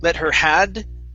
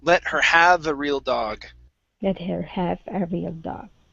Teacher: watch that v it sounded like you said a d sound